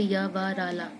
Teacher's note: जब हम इन व्यंजनों का उच्चारण करते हैं तो हमारे मुख से बहुत कम वायु निकलती है। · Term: अंतस्थ व्यंजन